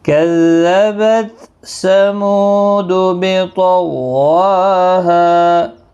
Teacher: واو کے اوپر کھڑی حرکات ہے، ہا الف مدہ ہے، ایک ایک الف کی مقدار کے برابر کھینچ کر پڑھیں گے